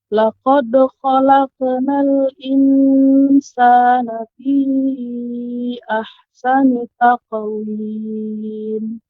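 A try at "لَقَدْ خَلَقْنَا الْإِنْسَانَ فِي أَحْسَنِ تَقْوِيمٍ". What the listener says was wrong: Ya, di sini ada yang kurang sedikit untuk qaf ya. Qaf ketika qalqalah. Laqad khalaqna, ini qafnya belum tebal. Ya, qafnya belum tinggi. Ya, maka ketika qalqalah pada huruf qaf dia lebih tinggi, isti'la, naik.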